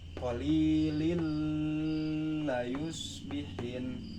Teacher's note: Jadi ini tanwin kasroh dimasukkan ke lam selanjutnya. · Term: idgham bilaguna